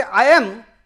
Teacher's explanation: there is no gap between I and am. There is a co-articulation effect of I and am. So, I cannot say this boundary exists in spoken language, but yes, there is a certain word boundary exists in written spoken language which is identifiable by perception.